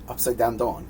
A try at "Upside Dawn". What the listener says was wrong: You said down. Upside Dawn. Upside.